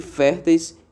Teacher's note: Repare que férteis, esse eis aí, ele é um ditongo oral. Então, nesse caso, fé é acentuado.